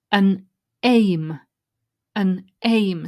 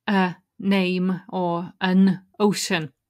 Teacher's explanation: the N from the final letter of the first word joins to the next word if it's a vowel